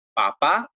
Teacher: aumentamos en la A que tiene la tilde. Sí, el volumen.